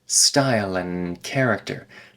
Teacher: we lose the D sound in and